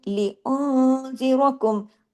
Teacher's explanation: इख्फा हकीकी, गुन्ना कामिला, नून पे, नून के बाद जाल है